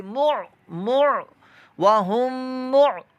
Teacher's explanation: عین جو ہے یہ ساکن ہے اور عین کی آواز حلق کے درمیان والے حصے سے ادا ہوگی